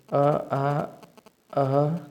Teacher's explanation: ये सभी कंठ से बोले जाते हैं। अ बोलेंगे तो कंठ से आ रहा है, मीन्स गले से।